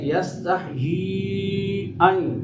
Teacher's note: یاء مدہ ہے، اس کے بعد حمزہ دوسرے کلمہ میں ہے، یہ مد جائز مد منفصل ہوئی